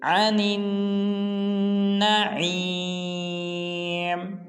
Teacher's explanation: جب نون کو آگے نون مشدد کے ساتھ ملائیں گے تو غنہ کریں گے